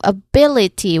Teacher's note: Now stress on the third from the end.